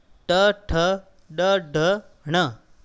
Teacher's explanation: इनका उच्चारण स्थान, उत्पत्ति स्थान है वो है मूर्धा, और इन वर्णों को हम बोलेंगे मूर्धन्य वर्ण